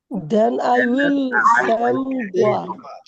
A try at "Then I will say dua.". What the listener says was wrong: এই সেম দোয়া না, সেই দোয়া। সেই বলেন, সেই। দেন আই উইল সে দোয়া, এরপর আমি দোয়া পড়বো।